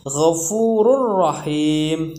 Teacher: Jadi ada tanwin bertemu dan huruf ro. Jadi ro yang pertama itu ya langsung dimasukkan ke ro yang kedua